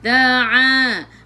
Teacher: a'i'u daripada kerongkong, bukan daripada hidung